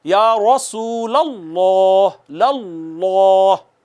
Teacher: ہونٹ گول کریں، زبان تالو کی طرف لے کے جائیں، خود بخود حرف موٹا ہو جائے گا، مفخم ہو جائے گا